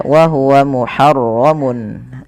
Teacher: Nah, pada lafal mun ketemu ain, ini harus dijelaskan suara tanwinnya karena adanya tanwin bertemu dengan huruf ain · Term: izhar halqi